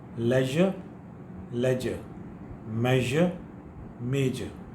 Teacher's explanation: In the leisure and measure, you feel a sort of vibration if you touch your throat like this.